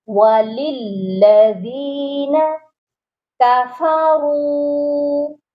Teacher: را کو موٹا بھی کریں گے اور کھینچیں گے بھی، اس کے ساتھ بھی واو مدہ ہے. · دوسرے لام پر مشدد ہے، اس کو ہم نے سختی سے پڑھنا، وَلِلَّذِينَ نہیں ہوگا.